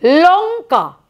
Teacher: যেটা দেব দেখো লঙ্কা উচ্চারণ করো লঙ্কা কোথায় ঠেকলো এসে জিহা লঙ্কার ক্ষেত্রে ঠেকলো এসে দাঁতের পেছনে যে মাড়ির অংশটা সেইখানে স্পর্শ করল